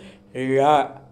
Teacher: நாவின் நுனி மேல் நோக்கி வளைந்து வருடுவதால் தோன்றும் எழுத்து ழா